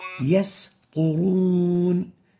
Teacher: the third common mistake for the sin is velarizing the sin to the level that it would sound as if it is a sad. An example of that is يسطرون.